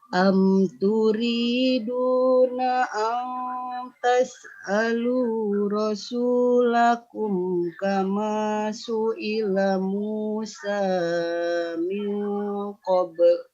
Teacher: Nah, sudah bagus Bu, tinggal kepanjangan di Musa.